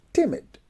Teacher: timid is in isolation is pronounced with the stress on the first syllable